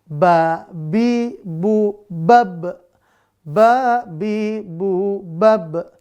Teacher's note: makhrajnya untuk huruf ba merapatkan kedua bibir rapat ya Ba merapatkan kedua bibir bibir lalu karakternya sifatnya ada pertama tipis · ketika kita melafalkan huruf ba maka udaranya harus tertahan enggak boleh berhembus